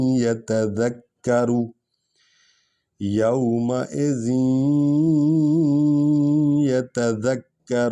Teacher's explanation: زال کو یہ میں ملائیں گے، غنہ کریں گے کیونکہ یہ پر شد آ رہی ہے